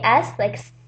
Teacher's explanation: when you say s like s you don't use your vocal cords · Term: unvoiced